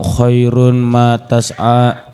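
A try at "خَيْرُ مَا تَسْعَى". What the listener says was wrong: Khairu ma, jangan di khairun kan?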